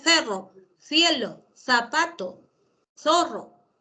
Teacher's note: Pero también el interdental aparece en la palabra cerro y en la palabra cielo.